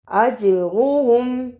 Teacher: جیم پر جزم کی صورت میں قلقلہ کرنا ہے. اج را کو پر پڑھنا، ہم جلدی پڑھنا.